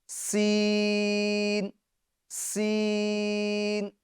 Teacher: آپ سن رہے ہوں گے کہ سین ادا کرنے میں سیٹی بھی نکل رہی ہے۔ سین سین سختی کے ساتھ بھی ادا کرنا ہے اور سیٹی کے ساتھ بھی ادا کرنا ہے، اور یہ دونوں اس کی خوبی یعنی اس کی صفت ہے۔ · سین کو ایک تو سختی کے ساتھ ادا کرنا ہے، اور ساتھ ساتھ میں ہمیں اس کے اندر سیٹی بھی نکالنی ہے